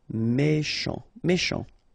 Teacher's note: Final T not pronounced. C-H together, sh.